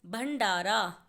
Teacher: भंडारा में भ के बाद ण की आवाज आ रही है इसीलिए उस ण को दिखाने के लिए हम भ पर बिंदी